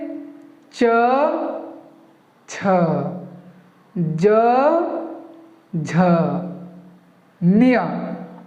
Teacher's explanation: अब ये जो च छ ज झ कहा मैंने, वो उसको आपने गौर किया होगा कि उसको उच्चारण करते समय हम लोग का जीवा जो है ये आगे वाले दांत के, या आगे वाले दांत के ऊपर वाले तालु के हिस्से में लगा है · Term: च वर्ग